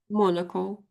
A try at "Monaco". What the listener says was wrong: Yeah, that's it.